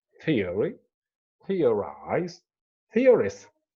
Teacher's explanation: The stress here is on the first one if you start counting from the beginning, or from the end, it is on the anti-penultimate.